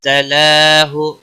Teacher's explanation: لام کے اوپر کھڑی زبر ہے ایک الف کے برابر کھینچ کر پڑھیں گے